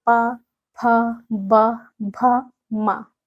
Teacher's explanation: तो ये है ओष्ठ, ओष्ठ स्पर्शी व्यंजन